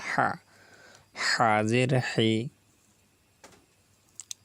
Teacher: হা গলার ভিতরে যাবে, কিন্তু কণ্ঠনালীর মাঝখান থেকে উচ্চারিত হবে।